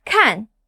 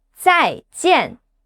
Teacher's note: The fourth tone drops fast, like giving a command.